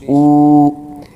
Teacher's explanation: تو یہ جو کھڑی حرکات ہوتی ہے اس کو ایک الف کے برابر کھینچ کے پڑھا جاتا ہے